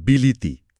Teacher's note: যেমন বিলাতি শব্দটা বিলিতি হয়ে যায়, এখানে আগের ই আর পরের ই এর প্রভাবে মাঝের আ ধ্বনিটা ই হয়ে গেছে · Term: মধ্যগত স্বরসঙ্গতি